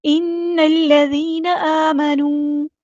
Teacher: نون کو ہم نے لام کے ساتھ ملا دینا ہے، حمزۃ الوصل ہمارا ڈراپ ہو جائے گا